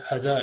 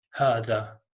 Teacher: So if a short vowel is held for a moment, then the dagger alif on ha would be 2 moments, as in a double of each one of these sounds, as in twice as long